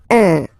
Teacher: Of course, after that you will master it without any problem and without any doubt, but you've got to pronounce it like un. So it's what we call the nasal, so it goes in your nose, okay? So if you listen to me, you don't hear any N, okay? So it's just a combination of the two.